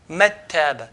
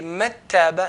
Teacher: But idgham, there's no ghunna and there's no touching of the tongue to the roof of the mouth. We want in between, part of idhar, part of idgham.